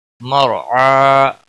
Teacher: مرعا را ساکن سے پہلے زبر ہے اس لیے را موٹا پڑا جائے گا۔ عین کے اوپر کھڑی زبر ہے، ایک الف کے برابر کھینچ کر پڑھیں گے، وقف کی صورت میں بھی